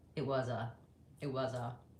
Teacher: We don't say this as it was a, three separate words. We run them together. It sounds like it was a, it was a.